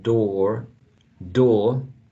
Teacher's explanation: in these dialects in this rotic dialects the final er is pronounced